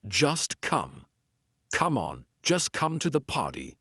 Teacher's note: I'm not saying come on, just come to the party. Just is followed by come, so that T is in between two consonants. It's in between the S and the C of come. So we're gonna make it silent.